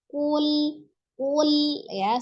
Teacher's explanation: Jadi kule seperti itu ya. Maka sesuai dengan sifat huruf lamnya, dia memiliki sifat miring ya, agak miring. Jadi miringkan ujung lidahnya supaya tidak memantul. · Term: lam sukun